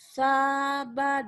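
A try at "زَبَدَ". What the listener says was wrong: Bukan sa, tapi za. Zainuddin. Zai.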